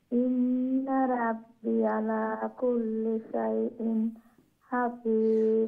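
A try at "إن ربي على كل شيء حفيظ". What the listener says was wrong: রাব্বি জেরের পরে ইয়া সাকিন, রাব্বি আরো কয়েকটা রাব্বি গেছে, ওগুলা একটু লং হবে। রাব্বি ইয়া সাকিন, জেরের পরে ইয়া সাকিন থাকলে একটু লং হয়।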